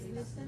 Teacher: The T is silent, basically.